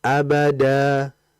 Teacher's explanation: Jadi jangan dihentak di ujung. Kalau dihentak di ujung itu seakan-akan ada hamzah. Sedangkan mat itu dia itu harus dibaca ya mutus saja.